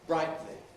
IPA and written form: ˈbraɪʔli (brightly)